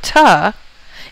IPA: tʌ